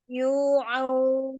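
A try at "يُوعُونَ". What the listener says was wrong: Nah, gitu.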